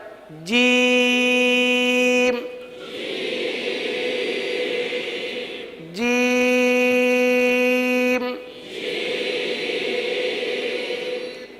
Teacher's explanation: जीम को हम तीन अलिफ तक खीच के पढ़ेंगे सही है ये इस हर्फ की मिक दार है जीम जी · वस्ते लिसान वस्ते तालू जबान का दरमियान तालू का दरमियान यह आपस में मिलाए और दांत मिलने से बचाए